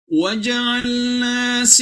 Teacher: sudah tidak ada lagi unsur nnya dimasukkan ke dalam wau dan harus didengungkan ditahan dua harakat